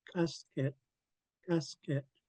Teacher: I have the middle of my tongue pressed against the roof of my mouth and you kick the K out from the middle of your mouth · with the middle of your tongue uh against the roof of your mouth blocking the airflow and you kick the K out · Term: pinch K